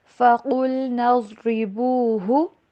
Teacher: قاف کو موٹا کر کے پڑھنا ہے، لام کے اوپر ٹھہرنا نہیں ہے